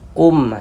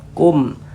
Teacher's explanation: Kemudian tidak didengungkan. Jadi jangan dibaca kum, ditahan begitu, jangan, pendek saja. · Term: izhar syafawi